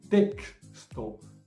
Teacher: cuando está en el centro de la palabra, entonces suena como es una unión de bifonemas, de K y S